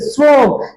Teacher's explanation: আপনি যখন শ্রম উচ্চারণ করেন দেখেন জিহ্বাটা অনেকটা দাঁতের কাছে এগিয়ে এসেছে দাঁতের ঠিক গোড়ার অংশে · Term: দন্তস